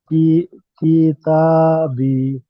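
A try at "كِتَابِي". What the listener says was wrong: কি টান দিচ্ছেন কেন? ভালো করে দেখে পড়েন, একটু খেয়াল করে, ধীরে ধীরে পড়েন, ঠিক আছে না? কিতাবি।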